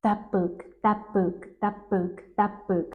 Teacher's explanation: Do you notice how t almost becomes p? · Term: assimilation